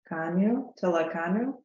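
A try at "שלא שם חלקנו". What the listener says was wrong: Well, this is a chet. Here's a taf. Here's a chet. One has the tail and says ch, and one doesn't, and is ch. So this is without the tail. It's chel.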